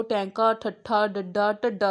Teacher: ਜੀਭ ਨੂੰ ਤੁਸੀਂ ਫੀਲ ਕਰੋ ਤਾਲੂਏ ਨਾਲ ਉਲਟੀ ਹੋ ਕੇ ਜਿਹੜੀ ਆ ਉਹ ਟੱਚ ਹੋ ਕੇ ਫਿਰ ਇਹ ਸਾਰੀਆਂ ਜਿੰਨੀਆਂ ਸਾਊਂਡਸ ਨੇ ਉਹ ਨਿਕਲਦੀਆਂ ਨੇ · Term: ਉਲਟ ਜੀਭੀ ਧੁਨੀਆਂ